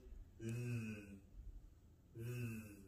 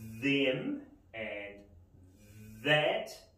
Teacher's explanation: This is what we call a voiced sound, voiced TH sound.